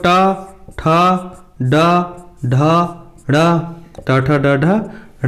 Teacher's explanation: री टा ठा डा ढा ड़ा रा और सा, इन सब का उच्चारण स्थान क्या होता है, मूर्धा।